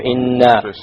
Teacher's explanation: Okay, we have a lot of rules here we have to go over. Firstly, the noon with a shadda on it. What do we do here? We do a ghunna here.